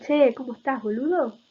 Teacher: Hay una caída en los enunciados. En Buenos Aires está muy marcado estos finales de che, ¿cómo estás, boludo? Caen muy significativamente.